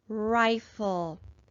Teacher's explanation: we have an open, accented vowel, so it's going to be long, and we're going to code it with a macron.